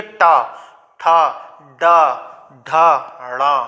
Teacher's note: कहाँ जीव आपकी स्पर्श हो रही है, मूर्धा पे स्पर्श हो रही है, इसीलिए क्या कहलाते हैं, मूर्धन्य कहलाते हैं।